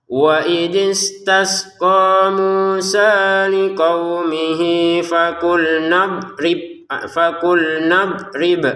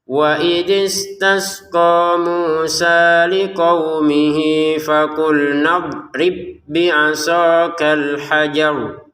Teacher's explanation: Jadi kalau diputus fakul nadrib ada pantulannya, kalau disambung tidak ada pantulan sama sekali.